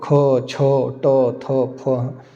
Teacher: अघोष महाप्राण अघोष का मतलब कंपन नहीं निकल रहा। कंपन नहीं हो रहा लेकिन हवा मुंह से भी ज्यादा निकल रही है। वो ख, छ, ट, थ, फ।